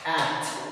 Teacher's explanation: pressure के साथ plosive होते हैं, यानी स्टॉप करते हैं और उसके बाद एक्सपेल करते हैं बहुत फोर्सफुली